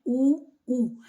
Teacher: हमारे होठ जो है वो क्या कर रहे हैं एक गोलाकार ले रहे हैं तो इसलिए इसका उच्चारण स्थान क्या हो जाएगा ओष्ठ हो जाएगा ठीक है इनके उच्चारण से होठ जो है वो अपना आकार बदल रहे हैं तो इसलिए इसका उच्चारण स्थान क्या हो जाएगा ओष्ठ हो जाएगा। · हमारे होठ जो हैं वो एक आकार ले लेते हैं। ठीक है, गोल आकार ले लेते हैं उ तो किसके कारण, ठीक है, उ और उ के कारण हमारे होठ जो है वो क्या कर रहे हैं, एक गोलाकार ले रहे हैं।